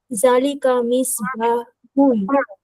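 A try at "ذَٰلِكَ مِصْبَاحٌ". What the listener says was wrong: জালিকা না, হ্যাঁ শব্দটা এই যে একটু টানটা অন্য জায়গায় পড়ে গেছে। এই টানটা হবে জায়ের মধ্যে, জালিকা, জালিকা না, জালিকা মিসবাহুন, এভাবে হবে।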